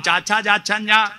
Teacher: നാവ് അണ്ണാക്ക് പറ്റിച്ചിട്ട് താലവ്യം